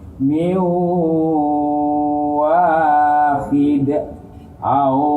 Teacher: Nun mati tanwin fathah kasroh atau dhammah bertemu dengan waw. Masuk dengan dengung. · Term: idgham bi gunnah